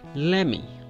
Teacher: So we skip the T sound while we're going to say me.